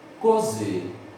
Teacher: A sílaba mais forte é a última, né? O Z. Então aqui a gente tem um caso de oxítona, ok?